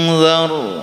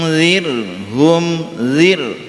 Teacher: Perbedaannya disebabkan karena ra yang pertama ini didahului dengan fathah sehingga menjadi tafkhim, tebal ra-nya, sedangkan ini ra ini didahului dengan kasrah. Jadi zar itu ra-nya tebal, sedangkan di sini zir tipis